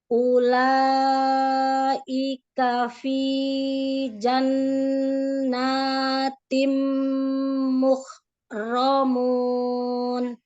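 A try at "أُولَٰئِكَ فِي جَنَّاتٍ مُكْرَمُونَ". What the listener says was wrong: dua harakat jangan terlalu panjang satu ayunan suara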